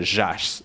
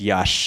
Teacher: So like yash for like young is a jas in Kazakh, and it's yash in Uyghur. So like the zh that you see in Kazakh and Kyrgyz comes from an older y